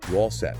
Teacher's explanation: this is often a question where the auxiliary R is dropped in casual speech